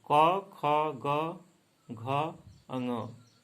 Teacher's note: क वर्ग का उच्चारण स्थान क्या होता है? कंठ होता है।